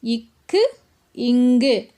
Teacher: இந்த ரெண்டு மெய்களும் நாவினுடைய முதல் பகுதி அன்னத்தின் அடியை பொருந்துவதால் பிறக்குது